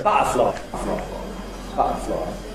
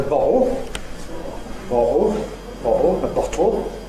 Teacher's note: there are some very noticeable Cockney glottal stops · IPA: [ˈbʌʔəflɒɪ]